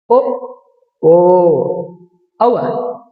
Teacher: ಕಂಠದಿಂದ ಮತ್ತು ತುಟಿಯಿಂದ ಎರಡುಗಳಿಂದ ಉತ್ಪತ್ತಿಯಾಗುವಂತ ಅಕ್ಷರಗಳು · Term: ಕಂಟೋಷ್ಟ್ಯ